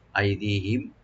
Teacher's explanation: আই এখানে হামজাকে right দিবেন আর দি এখানে টানবেন